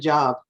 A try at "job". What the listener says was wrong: When you said job, you meant job, but it sounded like shop, to me at least. Can you say job? The sound is job. So when you see that little U with a big J, You say job. That's the sound of it.